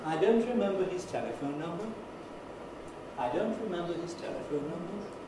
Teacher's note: a rise on the first syllable of telephone